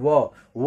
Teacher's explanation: व को जब भी हम उच्चारित करते हैं तो हमारी जीभ दांत को टच करती है और ओठ दोनों सट जाते हैं तो इसलिए आपका ये दंतोर दंतु व व होता है यानी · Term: दंतु ध्वनि